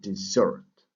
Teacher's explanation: this word has a stress on the last syllable